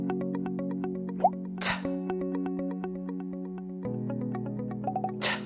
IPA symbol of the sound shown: t